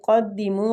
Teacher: قاف مستعلیہ حروف ہے، پور پڑھیں گے